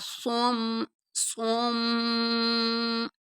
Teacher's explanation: غنہ کہتے ہیں ناک میں آواز لے کے جانے کو، اور ایک الف کے برابر آپ اس کو لبا کریں گے